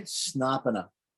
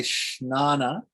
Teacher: Snapana is a short A, Shnana is a long A.